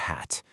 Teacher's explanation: It's really just a breathy sound, isn't it? That h is just you pushing air out.